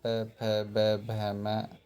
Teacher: पे वर्ग है पे फ ब भ म उ उच्चारण स्थान ओष्ठ है। नाम है ओष्ठव्य। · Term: ओष्टव्य